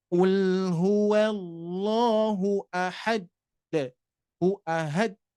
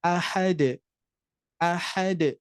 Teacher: huruf Qalqalah Dal itu ketika disukunkan dia sifatnya memantul dan pantulannya itu langsung secara langsung dan ringan ringan dibaca ahad ahad tapi tetap harus jelas karena ini termasuk